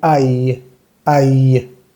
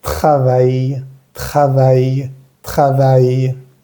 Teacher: como una pequeña I prolongada al final